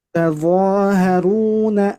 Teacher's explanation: Ta-nya tidak boleh dibaca tebal. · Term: huruf ta